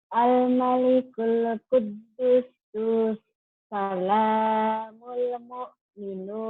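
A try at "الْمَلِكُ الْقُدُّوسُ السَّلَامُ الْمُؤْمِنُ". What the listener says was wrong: Al-malikul, Bu, gitu. Nyambung. Al-malikul qudusus salamul mu'minul muhaimin. Kalau nggak kuat bisa dibagi-bagi. Nyamber, kurang nyamber. salamul. Al-malikul qudusus salamul mu'min.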